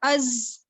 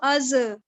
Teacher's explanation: جیسے کہ ہم اگر اس کو کسی کے ساتھ ملا کر پڑھیں تو میں اس کو از پڑھوں گی، یعنی زا پر میں اپنی آواز کو جماؤں گی، اس پر میں اپنی آواز کو ہولڈ کروں گی، میں اس کو از ایسے نہیں پڑھوں گی، از.